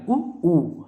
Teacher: इनको उच्चारण करते समय हमारे मुख की आकृति गोल वृत्ताकार बन रही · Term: ओष्ठ